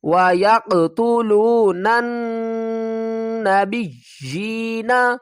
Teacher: نون کو اس نون کے ساتھ ملائیں گے، الف اور لام کو ہم نے نہیں پڑھنا